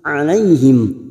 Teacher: Alaihim fathah bertemu ya sukun huruf lain kita lunakkan.